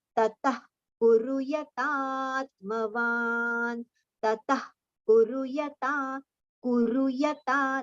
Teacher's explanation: only the exhalation so that visarga sound should be heard like kha